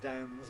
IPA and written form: dænz (Dan's)